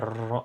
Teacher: ada getaran yang berulang-ulang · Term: tikrari